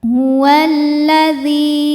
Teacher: Karena lam tasydid ini mengandung dua lam sukun dan lam fathah. Lam yang sukun tidak dibaca, kita langsung masuk ke lam kedua, dileburkan. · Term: alif lam syamsiah, alif lam syamsiyah